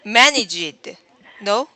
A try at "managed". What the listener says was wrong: There's no id sound at the end. Managed. It's just the D sound, past tense of manage. So it should be managed.